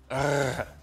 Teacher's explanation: this is called a uvula trill this is the r sound in france